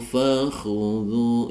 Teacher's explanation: kha huruf isti'la tebal karena berharokat dhamma. Dhu dibaca mad tabi'i panjang 2 harokat, dhammah diikuti waw sukun diikuti huruf berharokat sukun.